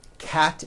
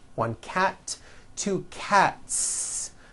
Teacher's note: cat ends with an unvoiced t one cat two cats again me s ending is unvoiced cat